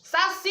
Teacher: Qual que eu fiquei mais tempo falando? O si. Então, si é a sílaba tônica, é a sílaba mais forte.